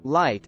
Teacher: in the word light the L Sound is pronounced with the tip of the tongue against the alveolar Ridge